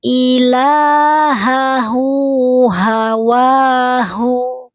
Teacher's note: Ha besar, ha domir, ha besar, ha domir. Sama-sama dia keluar dari pangkal tenggorokan.